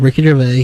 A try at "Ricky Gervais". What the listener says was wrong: Ricky Gervais? Would you stop the S and get silent?